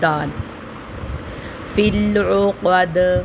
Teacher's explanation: دال ساکن کے اوپر ہم قلقلہ کریں گے کیونکہ یہ حروف قلقلہ میں سے آ رہا ہے،